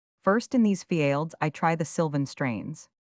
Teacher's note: an accent is with great grace thrown upon the first syllable, in which case it seldom happens that any other syllable is accented before the 4th.